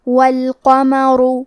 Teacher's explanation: یہاں را کا حکم ہے تفخیم، یہاں ہمیں را کو موٹی آواز میں پڑھنا ہے